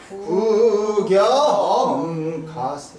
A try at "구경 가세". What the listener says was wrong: 그치 음이 거기까지 내려가야 돼. 구경 가세 아니야 구경 그렇지 구경 가세